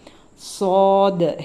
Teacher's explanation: நுனி நாக்க கீழ் பல்லினுடைய உள்பகுதி ஈரமான வெட்டான ஏரியா இருக்கு இல்லையா ஈரமான பகுதி அங்க கொண்டு போய் நிறுத்தி இந்த உச்சரிப்போம் சாத் ஹெவி ஆன் வரணும் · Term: ஹெவி லெட்டர்